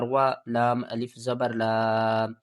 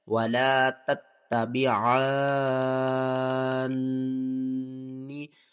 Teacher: ولا الف سے پہلے زبر ہے، حروف مدہ ہے، ایک الف کے برابر کھینچ کر پڑھیں گے